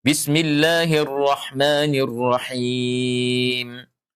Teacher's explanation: Iya, jadi bismillahirrahmanirrahim. Ya, karena kita wakaf pada lafaz itu, maka mim terakhir harus disukun. Jadi bacanya bismillahirrahmanirrahim. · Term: mad arid lis-sukun